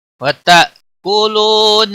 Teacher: حمزہ ساکن کو تھوڑا جھٹکے کے ساتھ ادا کریں گے